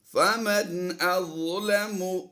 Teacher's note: نون ساکن کے بعد حمزہ آ گیا، یہاں پر ہم نے اظہار کرتے ہوئے پڑھنا ہے